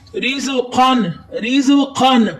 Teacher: رز قاف قلقلہ ہے، اس کو حروف مستعلیہ میں سے قاف اس کو موٹا پڑھیں گے